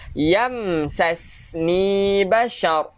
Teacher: Ra ni kita tebalkan bashar